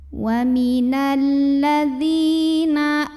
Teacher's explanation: Karena ada ya sukun yang didahului baris kasrah. Maka dzal yang berbaris kasrah kita panjangkan 2 harokat saja. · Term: mad tabi'i